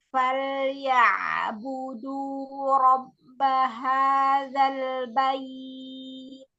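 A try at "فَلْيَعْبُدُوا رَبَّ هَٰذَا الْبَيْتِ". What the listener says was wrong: Keluarin hamesnya untuk ulta sukunnya ya. Bait.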